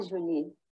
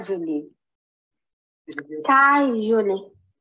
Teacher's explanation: A parte mais forte, o acento da palavra tá ali no começo